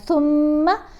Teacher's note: یہاں پر دیکھیں میم کے اوپر ہم نے غنہ کرنا ہے